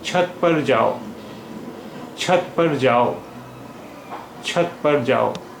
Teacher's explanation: In छत, cha is aspirated, and in jao, ja is unaspirated.